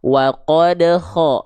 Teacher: ada keluar nafas dengan karakteristik kayak ngorok walaupun bukan ngorok. Itu hanya sebagai analogi saja. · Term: huruf ko